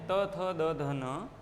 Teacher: हमारी जीवा की आगे की नोक, ये पॉइंट ऊपर के दांतों को पीछे से स्पर्श करता है, हल्का धक्का देता है, प्रेशर करता है, और फिर जो ध्वनि निकलती है वो ये आपके सामने है। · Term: दंत व्यंजन